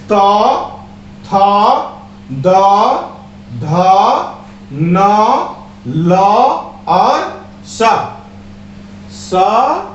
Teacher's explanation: तो इसका जब हम लोग उच्चारण बोलते हैं, जब हम उच्चारण करते हैं तो स्पष्ट ही आपको महसूस होता है कि मेरा जीभ क्या होता है, टकराता है, अर्थात दांत की सहायता से हम लोग बोलते हैं, इसीलिए इसका उच्चारण स्थान दंत है